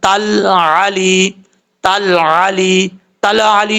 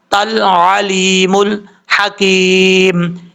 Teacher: لام کے مخرج میں لگتے ہوئے زبان جم جائے گی اس میں قلقلہ نہیں کرنا. تل علی تل علی تل علی نہیں پڑھنا تل علیم الحکیم اس طریقے سے پڑھنا ہے.